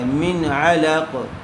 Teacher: من بغیر غنے کے جلد اظہار کر کے پڑھیں گے، اس لیے کہ نون ساکن کے بعد حروف حلقی میں سے عین آیا ہوا ہے